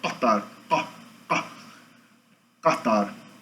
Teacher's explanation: o uvular é lá atrás do velo, depois do K e do G